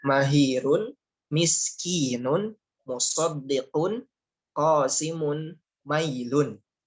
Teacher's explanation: makhrajnya di kedua bibir, sifatnya di gunnah atau di rongga hidung